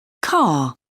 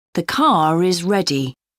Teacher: For example, car. When the word is linked to a word beginning with a vowel, the R sound reappears.